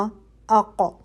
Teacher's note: ٹھیک ہے، یہ 5 حروف ہیں، جیسے ق، اق، ٹھیک ہے، آپ کی آواز پلٹتی ہوئی محسوس ہو رہی ہے. قو کے مخرج پہ جا رہے ہیں، فوراً واپس زبان ہٹا رہے ہیں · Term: قلقلہ